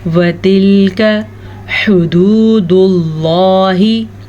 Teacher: کاف کو کھینچ کے نہیں پڑھنا, کاف کو نرمی سے بھی پڑھنا ہے اور بغیر لمبا کیے پڑھنا ہے